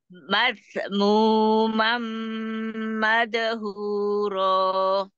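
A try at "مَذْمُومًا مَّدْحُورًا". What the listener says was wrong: Ya, roh wahud di huruf zalnya belum dapat tuh. Mazmu mamadhuro. Da dan dal dan zal.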